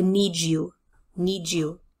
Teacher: that D and Y together often results in the sound of je